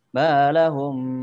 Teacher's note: Nah, tadi kurang lama di situnya, Dek. Balahum, karena itu mim mati ketemu ba. Itu namanya ikhfa syafawi. Jadi mohon dilamakan di situ.